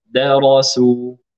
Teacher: ترقيق الدال عند تفخيم الراء